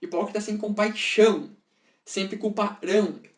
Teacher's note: A gente pode ver que quando a gente está lendo a frase, digamos que o ão ele se sobressai, né, que é a sílaba tônica, é uma vogal. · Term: assonância no ão